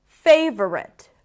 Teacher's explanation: The primary stress is on the first syllable, f. Then we have awah.